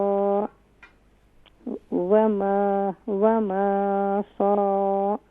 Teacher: صاد کے بعد الف ہے تو یہاں ایک الف کی مقدار کھینچیں گے بھی اور صاد کو فل ماؤتھ بھی کریں گے. ٹھیک ہے.